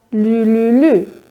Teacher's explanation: in dem Fall sprecht ihr nämlich die Silbe mit dem Zungenrücken statt mit der Zungenspitze. Und wir müssen natürlich mit der Zungenspitze artikulieren, wenn wir, wie gesagt, nicht super schnell sind, dass wir irgendeine Doppelzunge machen.